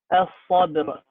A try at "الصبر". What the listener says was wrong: Very good. But don't make the ra as a qalqala. Don't say as-sabr.